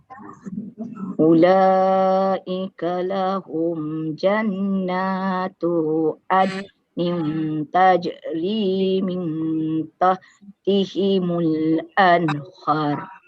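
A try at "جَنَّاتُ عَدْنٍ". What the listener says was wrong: Akak, dekat jannah tu tadi tu terbaca dengan panjang. Dekat tu akak baca dengan panjang. Tu ni pendek saja.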